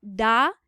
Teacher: da is produced on the alveolar Ridge